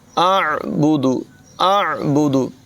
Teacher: ला अअबुदुल्लज़ी, अअबुदु, अअबुदु, हमज़ा और आइन की आवाज़ में नुमायाँ फ़र्क करेंगे। आइन जो है ये हलक़ के दरमियान वाले हिस्से से अदा होगा